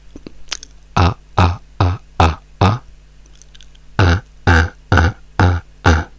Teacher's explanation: La lingua, la punta della lingua, questi sono i denti sotto, la punta della lingua fa così, cioè la punta della lingua prende contro i denti di sotto e questa parte si piega, quindi avete, sto esagerando, così. · In inglese le labbra non vanno mai, non parliamo mai così di lato, facciamo sempre su e giù, quindi è la mascella che si muove, è un suono molto aperto con la mascella che va giù